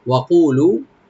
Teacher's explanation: ওয়া ওপেন থাকবে, কু একালিফ টানবেন, লু একালিফ টানবেন